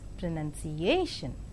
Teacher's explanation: in five syllable word pronunciation the penultimate syllable is more prominent